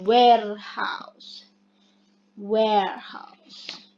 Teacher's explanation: Labial velar combines 2 points of articulation, the lip and the soft palate area.